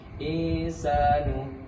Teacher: nun sukun bertemu dengan huruf ikhfa hakiki yaitu sin dibaca samar dengan dua harakat